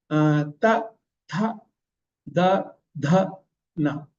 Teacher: The tongue is touching the teeth when it is pronouncing. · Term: dentals